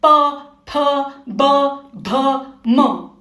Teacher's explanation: प वर्ग होठों वाली लाइन। देखो दोनों होठ मिल रहे हैं। · दोनों होठ मिल रहे हैं, प फ ब भ म।